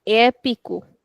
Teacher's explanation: The stretch is on the first one itself because of the accent.